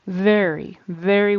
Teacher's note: the V sound is just like the F sound your teeth are on your lower lip and air comes out out only with v your voice vibrates just like with Z